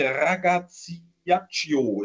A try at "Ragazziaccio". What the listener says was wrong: Naja, ein bisschen schneller und hintereinander, dann ist das richtig.